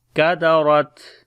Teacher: ra we read in heavy sound due to fatha sign on it, and on the ta when we stop, so we make shiddat and hums quality as well, as we say كَدَرَتْ.